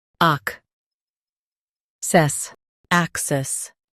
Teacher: Emphasize ac and keep cess clear.